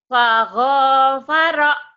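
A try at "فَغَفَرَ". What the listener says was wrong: nggak ada yang panjang. Faghfara.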